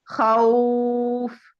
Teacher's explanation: जैसे खौफिन, तो जेर है आखिर में, उसको साकिन करें और खौ को 3 से 4 अलिफ के बराबर लंबा करें। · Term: हरूफ लीन